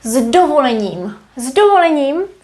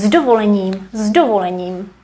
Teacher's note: the d as it's voiced affects the consonant before it